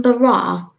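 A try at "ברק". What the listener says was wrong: It's Barak with a K at the end.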